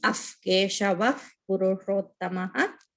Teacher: We have to cancel, if it's in the middle of the pada, we have to cancel the visarga and put F sound. So visarga should be pronounced as af, Keshava, Purushottamaha.